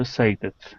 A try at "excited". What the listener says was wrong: Now this X. Okay. You have to pronounce a K. Excited.